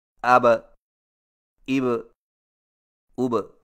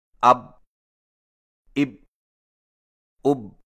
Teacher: مثلا حرف با پر جزم آئے تو دونوں ہونٹ آپس میں مل کر الگ ہو جاتے ہیں اور قلقلہ ہوتا ہے